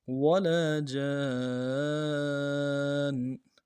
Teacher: نون کے اوپر تنوین غنہ کریں گے. وقف میں جو تنوین ہے اس کو ساکن سے یعنی جزم سے بدلیں گے